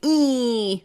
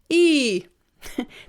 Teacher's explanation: lifted and you can still shape the sound of an e now when we speak we don't say e e it's not nasal it's actually e